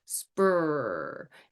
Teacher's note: my lips are slightly rounded, but they are pursed forward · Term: SPR blend